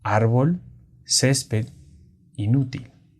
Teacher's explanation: la sílaba tónica es la penúltima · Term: graves o Llanas